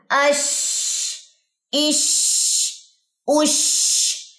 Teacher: سانس آپ کی جاری ہوگی، اش، اش، اش. سانس ہتھیلی کو لگنی چاہیے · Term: ہمس